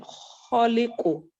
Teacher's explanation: the kha from the upper part of the throat